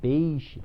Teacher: começa com vogal forte e termina com vogal fraca. Decrescente, por isso é o nome.